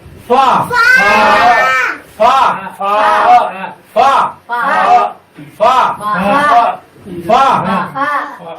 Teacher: ثاء ظا ذال ثاء ظا ذال ثاء। এরপরে 14 নম্বর মাখরাজ নিচে ঠোঁটের পেট সামনের উপরের দুই দাঁতের আগার সঙ্গে লাগাইয়া